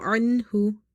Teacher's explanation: Okay, anhu, ain is from the middle of your throat because this is from the khalqiya letters, throat letters. Hu, ha is also from the throat letters. Okay, but it's from the bottom of the throat.